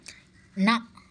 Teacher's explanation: நாவின் நுனி மேல்வாய் அன்னத்தின் நடுப்பகுதியை தொடுவதால் பிறக்கிறது